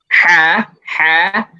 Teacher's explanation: Kalau ha itu dia di pertengahan tenggorokan.